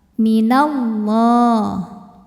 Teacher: lam pada lafaz Allah atau lam jalalah dibunyikan secara tafkhim, sebab harokat huruf sebelumnya fathah ya. Maka ini kita bunyikan dengan tebal, minallah.